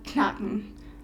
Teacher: People learning German from an English-speaking perspective will often drop a K at the beginning of a word